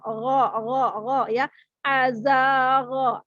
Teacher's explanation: ghain ini huruf tebal, huruf isti'la, maka tebalkan di mana? Di makhrajnya, yaitu adalah di tenggorokan yang paling atas atau boleh disebut paling luar, kemudian tebalkan.